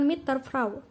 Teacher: bunyi D pada kata Der berubah menjadi Bunyi t sebagai akibat dari pengaruh bunyi t pada kata mid yang ada di yang ada di depannya yang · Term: asimilasi progresif